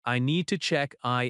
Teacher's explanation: Stress need and in slightly. Keep small words softer.